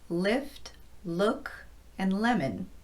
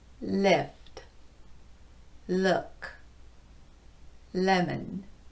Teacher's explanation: The tongue is up high in the mouth and touching lightly against the Upper Front Teeth